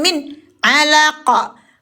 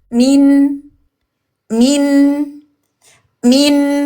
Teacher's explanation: Huruf nun ada bainiah, tawassut, ada bainiah, tawassut harus mengalir. Ada gunah dan gunah selalu lewat di hidung di ghaisum mukammil. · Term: nun yang izhar